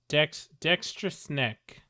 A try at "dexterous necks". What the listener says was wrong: Nope, there's 2 necks. More than 1 neck.